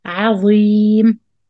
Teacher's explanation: make the ayn light, the dha heavy.